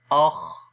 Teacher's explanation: حمزہ خا زبر اخ، اب یہ خا کے اندر بھی سانس جاری ہوا تو یہ خا کی صفت ہے۔